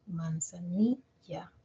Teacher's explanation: ni tiene más intensidad que las otras cuatro vocales no al comparar las cuatro la i tiene más intensidad por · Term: acento fonético